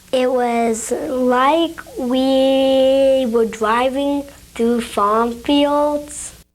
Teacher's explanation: prolong the e in the word we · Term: sound prolongations